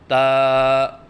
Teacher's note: زبان کی نوک جب اوپر والے سامنے کے دانتوں کی جڑ سے لگے تو اس سے تا ادا ہوتا ہے۔ جیسے کہ آپ کو اس نقشے میں نظر آ رہا ہے کہ زبان کی نوک ثنایا علیہ کی جڑ سے لگی ہوئی ہے۔ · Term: حرف تا